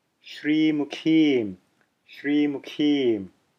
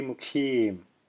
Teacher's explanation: a little contraction of the diaphragm to give extra air as you're saying that K in the keem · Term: aspirated version